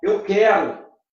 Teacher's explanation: Observem que em quero, você tem o QU com som de K. Veja que o U não é pronunciado.